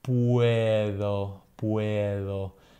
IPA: ð̞